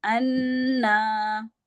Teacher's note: تو آپ نے نون کے اوپر غنہ کرنا ہے 2 حرکات کے برابر